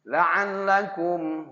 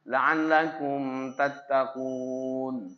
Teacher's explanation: mim mati menghadapi ta tidak boleh ditahan